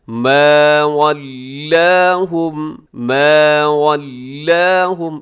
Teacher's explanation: یہاں سب حروف جو ہیں وہ سب کے سب باریک پڑھے جائیں گے۔ ما ولاہم، ما ولاہم، اس میں لام کو موٹا نہ کیجیے گا، واللہم غلط ہو جائے گا، ولاہم۔